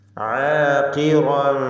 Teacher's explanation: ഇസ്തിഅലാഇൻ്റെ ഹർഫായ ഖാഫ് മക്സൂറത്താണ്, കസ്റ നൽകപ്പെട്ടതുകൊണ്ട് കുറഞ്ഞ തഫ്ഖീം ഖാഫിന് കൊടുക്കുക. ശേഷം റാ ഉണ്ട്, റാഉം തഫ്ഖീം ചെയ്യേണ്ട അക്ഷരമാണ്.